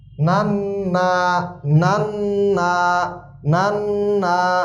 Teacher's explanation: নান্না একটু গুন্না হইছে কারণ ওয়াজিব গুন্না